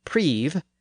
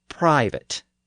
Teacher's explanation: the sound shifted from E, high in the front of the mouth, to I, low in the back of the mouth. We can hear that shift in the difference between Middle English prive and Modern English private.